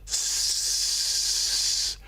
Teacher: it's got its tongue sort of at the back of the teeth, and it's pushing the air through the top teeth